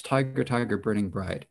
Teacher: then burning so here you've got again four syllables per uh four stresses per line and the first syllable stress the second is unstressed